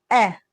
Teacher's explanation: बीच वाले हिस्से से बोला जाता है। इसको मध्य स्वर कहते हैं